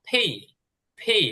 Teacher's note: আচ্ছা, এরপরে হচ্ছে ফি, এটা পি না, পরের শিকার পি না, প এবং ফ এর মাঝখানে যেভাবে উচ্চারণ হয়, ফি, ফি, একটু মুখ দিয়ে হাওয়া বের হবে, বাতাস বের হবে